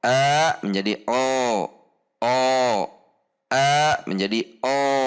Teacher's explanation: sehingga bunyi A terdengar seperti O. Perhatikan perubahannya dari pangkal lidah rileks, kemudian pangkal lidah tegang atau isti'la atau naik. Akan berubah bunyi A-nya menjadi terdengar seperti O.